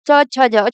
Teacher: जब आप च छ ज बोलेंगे तो आपका जो टंग है ऊपर वाले जो तालु होता है उसको टच करता है, तो इसीलिए इसको तालव्य बोला जाता है, च छ ज।